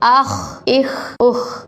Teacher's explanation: یہاں خا حروف مستعلیہ میں سے اس کو موٹا پڑھیں گے۔